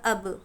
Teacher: حمزہ با زبر اب، یہاں پر با پر جزم ہے اس لیے اس کو قلقلہ کریں گے